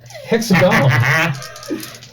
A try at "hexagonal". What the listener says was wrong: emphasis on the wrong syllable.